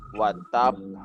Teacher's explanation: Nah, ini qalqalah terbesar yang ada di dalam Al-Qur'an adalah jika qalqalah itu diakhirkan dengan tasydid ya. Dia huruf qalqalah dan dia bertasydid, maka dia penyebutannya ada delay sedikit seperti itu, ditahan. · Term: qalqalah akbar